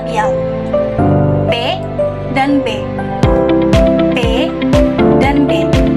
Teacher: Huruf P dan B dihasilkan oleh pertemuan oleh dua bibir atau bisa kita sebut dengan bila P dan B. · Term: bilabial